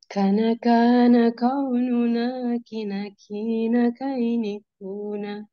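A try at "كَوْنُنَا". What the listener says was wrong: huruf qaf ya. Jangan kana qaununa, tapi kau. Kau ya. Kau. Kana kaununa kina kaini kuna. Kana kaununa kina kaini kuna.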